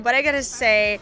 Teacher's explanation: she pronounces i have got to say as gada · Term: connected speech